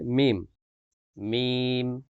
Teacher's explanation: দুই ঠোঁটের শুকনা স্থান হইতে মিম